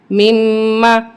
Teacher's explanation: اب یہاں میم مشدد ہے اس کو ہم سختی کے ساتھ پڑھیں گے اور غنہ بھی کریں گے